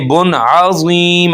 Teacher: आगे बुन अज़ीम, अब यहाँ पे अज़ीम नहीं करना, ज़ीम करेंगे तो ज़ा निकलेगा। ज़ीम मोटा करके पढ़ेंगे और 3 अलिफ के बराबर तक हम इसको खींच सकते हैं। वक्फ की सूरत में वक्फ हो रहा है।